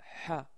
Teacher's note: le son ha, c'est un son qui sort du milieu de la gorge